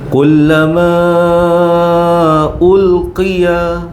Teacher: mad jaiz munfasil ya. Lima atau empat harakat.